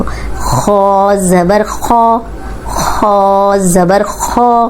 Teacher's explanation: ख मोटा ही पढ़ेंगे जबर के साथ भी मोटा ही पढ़ेंगे लेकिन लंबा होने से बचाएंगे जबर को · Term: मोटे हर्फ